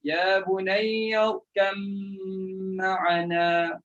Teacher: Ini ba jumpa mim. Ba pun bahagian bibir, mim pun bahagian bibir dengan kedua-dua dengan cara tutup mulut. Jadi memang senang dengan idgham.